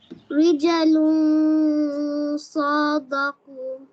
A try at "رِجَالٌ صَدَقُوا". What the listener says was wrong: সোয়াদ short, রিজালু সাদাকু, বলো রিজা।